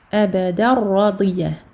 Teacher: Donc ici on aura un idram sans runna, sans aucune runna. Il n'y a pas de runna ici pour le al-idram avec un ra.